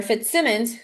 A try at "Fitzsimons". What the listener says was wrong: Fitzsimons. Fitzsimons. It's not a double M. Fitzsimons.